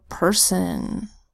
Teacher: We've got a P that says P, an ER that says an S that says S, the O that makes a schwa vowel sound because it's in an unstressed syllable, and an N that says p, s, n, person.